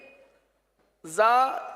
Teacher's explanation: زا یہ زبان کی نوک اور دونوں دانتوں کے اندرونی کنارے سے ادا ہوتے ہیں. زبان کی نوک اور دونوں دانتوں کے اندرونی کنارے.